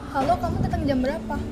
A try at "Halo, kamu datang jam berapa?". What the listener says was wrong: Nah, nggak gitu nadanya. Kamu nggak gitu ngomongnya. Nadanya agak ditekan. Halo, kamu datang jam berapa?